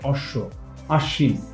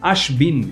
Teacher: আশ্রয়ী যে ব্যঞ্জনটা থাকে সেটা হচ্ছে দুইবার উচ্চারণ হয় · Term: দীপ্ত